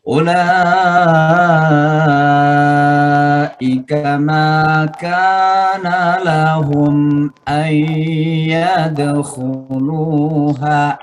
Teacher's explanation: baik dibaca lambat maupun dibaca cepat, hukumnya tetap 6 harakat ya. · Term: mad wajib muttasil